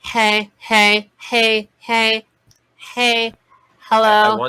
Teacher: the folds are very well adducted and then um it is a little over full because of how heavy you are maintaining that adduction and then it goes a little nasal then a little nasality which we talked about i think a